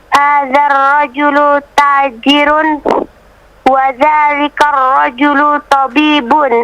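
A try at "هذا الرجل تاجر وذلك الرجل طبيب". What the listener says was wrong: Bagus, bagus sekali.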